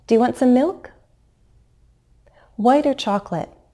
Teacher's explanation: my Rising intonation may not be so high when I present that first alternative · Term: low rise